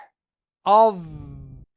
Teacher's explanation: اطباق کا مطلب ہے زبان کو اوپر کے تالو سے ڈھانکنا، ملانا۔ تو حرف ضا ادا کرتے وقت زبان اوپر اٹھتی ہے اور اوپر کے تالو کو ڈھانک لیتی ہے، جس کی وجہ سے حرف ضا کی آواز موٹی اور بھری ہوئی نکلتی ہے